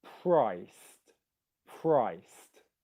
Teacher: it's coming after a voiceless consonant so in the ed ending if the e ed ending comes after a consonant where there's no vibrations in your throat you pronounce it as a t